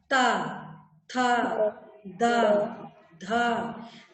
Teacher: जीभ हमारी दांतों को छूते हुए स्वर निकाल रही है, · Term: दंत वर्ण